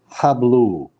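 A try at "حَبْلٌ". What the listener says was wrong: Tanween at the end. Two dhammas. Hablun.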